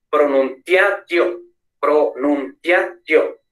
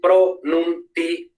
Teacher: Porque ia, io, es ae, oe, au, no. Entonces no son diptongos, entonces son hiatos, dos sílabas separadas.